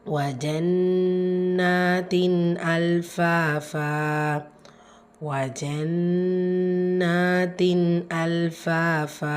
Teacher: நூன்ல நூன் முஷததா குன்னா செஞ்சு ஓதணும் · வா ஃபத்ஹா ஜா ஃபத்ஹா. வா ஜா நூனில் நூன் முஷத்ததா குன்னா செஞ்சு ஓதணும். கூடவே அலிஃப் சொகிரா இருக்குது, 2 ஹரக்கத்தளவு நீட்டம் கொடுத்து ஓதணும்.